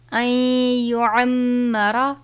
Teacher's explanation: نون ساکن کو یا سے ملا دیں گے، این پڑھیں گے، ان نہیں پڑھیں گے